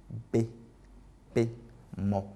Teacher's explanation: Bilabiales parce qu'elles font intervenir en fait les deux lèvres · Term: consonnes bilabiales